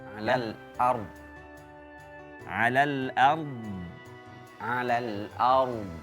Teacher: tipiskan hamzahnya, tebalkan ro-nya, dodnya dikasih istitolah. Dikasih jeda panjang sedikit. · Hamzahnya tipis, ro-nya yang tebal.